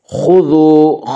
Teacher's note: خا کو پر پڑھیں گے، خا حروف مستعلیہ میں سے ہے۔